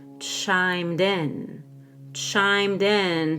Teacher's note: make sure we link the Ed with a fast D to the word in